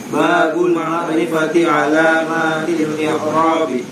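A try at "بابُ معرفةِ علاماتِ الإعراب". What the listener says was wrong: bukan babul ma'rifati babu ma'rifati alamatil i'rabi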